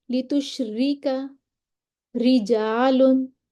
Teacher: جو صورتیں ہیں ان میں را کو باریک پڑھا جاتا ہے، را کے نیچے زیر ہو، باریک پڑھیں گے